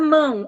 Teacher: vamos pegar a palavra mão ó mão Prenda o nariz mão o a e o o saem pelo nariz é um de tongo nasal Por que que é de tongo